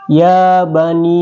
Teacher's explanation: mad jaiz munfasil ini dalam hukum tajwid dibaca panjang boleh 2 dan hingga 5 harakat. Jadi boleh 2 sampai 5 harakat panjangnya.